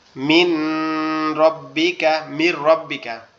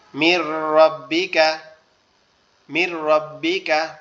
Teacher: র এবং লাম যদি নুন সাকিন অথবা তানবিনের বাম পাশে আসে, তখন এটাকে গুন্না ছাড়া মিলিয়ে পড়তে হবে। যেমন প্রথম অর্থটা আমরা দেখি, মিন রব্বিকা, মির রব্বিকা, মিম সরাসরি র কে ধরবে। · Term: ঈদগামে বেলাগুন্না